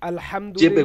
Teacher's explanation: হামজা যাবার আ, জি, তারপরেরটা আইন যাবার আ, আ, যেমন চেপে, আলহামদুলিল্লাহ। গলাটা চেপে।